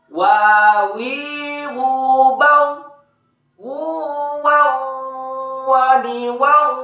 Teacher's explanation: diucapkan dengan mengumpulkan dua bibir kita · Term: huruf Waw